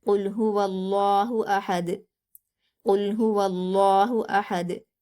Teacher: इसको वक्फ करते हुए ये जज्म में बदल जाएगा, और जब दाल पर जज्म आ जाती है तो क़लक़ला किया जाएगा